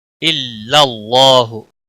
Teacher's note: اللہ کے لام کو موٹا پڑھیں گے، اس کے اوپر کھڑی زبر بھی ہے، 1 الف کے برابر کھینچ کر پڑھیں گے۔ لام کو موٹا اس لیے پڑھنا ہے کیونکہ پیچھے زبر ہے۔